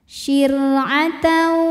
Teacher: Ro sukun dibunyikan secara tarqiq sebab harokat huruf sebelumnya kasroh, maka ro dibaca dengan tipis